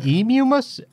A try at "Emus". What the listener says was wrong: What you're saying has two M's in it. Emumus. Emus.